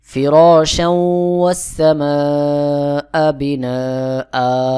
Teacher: হামজার উপরে 2 জবর রয়েছে, এখানে আমি 1 আলিফ টান দিয়ে পড়লাম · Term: মাদ্দে ইওয়াজ